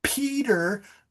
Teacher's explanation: there's air coming out of your mouth with the bilabial plosive